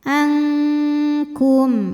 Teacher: Karena nun sukun menghadapi huruf kaf, maka nun sukun dibunyikan samar-samar. Siap-siap ke kaf disertai dengung. Tapi dengungnya lebih besar karena kaf makhrajnya jauh dari nun. Ankum ini pendek. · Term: ikhfa ab'ad